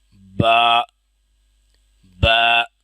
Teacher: اس کو زیادہ لمبا نہیں کرنا، ایک الف کے برابر کھینچنا ہے